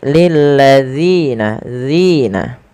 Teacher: panjangkan Zi sepanjang dua harakat